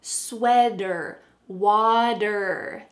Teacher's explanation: These are common examples of a T changing to a D. And finally, in this question, there's one more thing we need to mention.